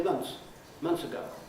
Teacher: What we do is we make it easier by dropping the th